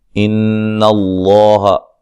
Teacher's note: لفظ اللہ کو موٹا ادا کریں گے، نون مشدد پہ غنہ ضروری ہے